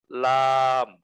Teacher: জিব্বার আগার কিনারা সামনের উপরের দাঁতের মারির সঙ্গে লাগাইয়া